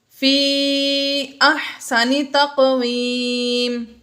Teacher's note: تقویم میں بھی قوف حروف قلقلہ میں سے ساکن ہے، اس لیے ہم نے اس میں قلقلہ ظاہر کر کے پڑھا · ثم میں میم مشدد ہے اس لیے ہم نے یہاں پر غنہ کیا، اور رددناہ، ردد دال میں دال ساکن ہے حروف قلقلہ میں سے ہے تو یہاں پر ہم نے قلقلہ ظاہر کیا۔